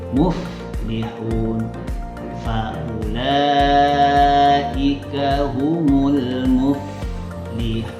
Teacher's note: kalau seandainya ada fa mati, agak lama bunyinya